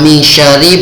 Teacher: Wa min syarri membacanya samar-samar, itu namanya bacaan ikhfa.